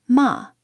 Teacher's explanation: The first tone is a high level pitch, marked with a macron, as in ma. The second tone has a rising contour, from mid to high, and is marked with an acute accent, as in ma.